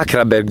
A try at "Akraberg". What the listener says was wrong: Devi pronunciarla, la K.